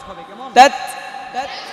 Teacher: হালকা একটু বাতাস বের করবেন। তাত তাত তাত তাত তাতি তু তাত তাত তাতি তু তাত তাত তান না তা তাম্বা, ঠোঁট মিশবে না। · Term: হামস